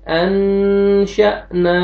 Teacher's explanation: حمزہ کو میں جب سکون آتا ہے تو جھٹکے سے پڑھیں گے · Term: حمزہ سکون